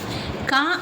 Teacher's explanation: ಕ ಅಂದ್ರೆ ಕಂಠ್ಯ ಕಂಠದಿಂದ ಬರುವಂತದ್ದು